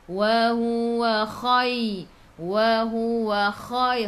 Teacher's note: Kha khiyakhu, biar ada angin, biar menggelegak.